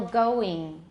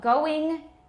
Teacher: So, going, it's not all the way to E. It's not I. It's somewhere in between. But we use the I.